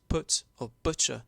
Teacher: other words such as put or butcher the vowel became uh near close near back rounded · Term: foot